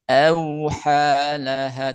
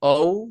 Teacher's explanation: A-nya tipis dulu, huruf lin. Awhalaha, tidak langsung o, tapi awha.